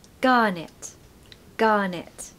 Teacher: Stress the first syllable. So gar, no R, of course.